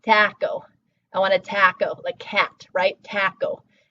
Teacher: So, we know it's gonna get [ɑ]. A lot of English speakers make that [æ], so taco.